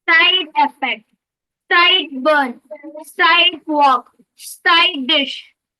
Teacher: with a low voice on these words and a high voice on side